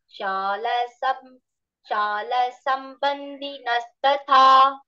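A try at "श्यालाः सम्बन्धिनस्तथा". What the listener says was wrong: Shalas. Shala is dirgha.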